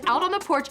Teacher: pronounces the T in out with a flap sound which then connects with the preposition on